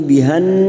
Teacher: masuk pada huruf Nun yang bertasdid kita dengungkan selama tiga atau dua harakat